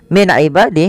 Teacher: ada nun sukun bertemu dengan Ain yaitu dibaca dengan jelas Suara nunnya karena dia ada bacaan izhar halqi izhar artinya jelas halqi berarti